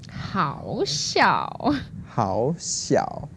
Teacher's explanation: So it's second tone and the third tone.